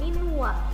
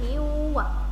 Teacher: Langsung masuk ke wa. Jangan minwa, tapi miwa. Langsung dimasukkan. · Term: Idgham bi gunnah